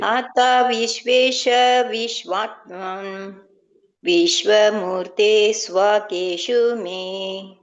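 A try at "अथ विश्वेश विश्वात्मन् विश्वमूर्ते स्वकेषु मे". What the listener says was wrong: Yes, correct.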